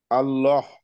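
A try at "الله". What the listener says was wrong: তাহলে আমরা বুঝলাম যে এই হাটা একটু ভিতর থেকে আসবে। আমরা যেন এরকম সাউন্ড না আসে, আল্লাহ। হ্যাঁ, এরকম যেটা সাউন্ড আসবে, এটা অন্য আরেকটা হা।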